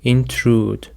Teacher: The stress is on the second syllable, intrude. Intrude is a verb and it means to enter, interrupt, or become involved in a place or someone's private life without being invited or welcomed.